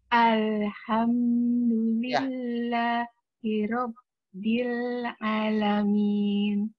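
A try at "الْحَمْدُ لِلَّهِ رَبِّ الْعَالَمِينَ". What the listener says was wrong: Hati-hati. A-nya panjang.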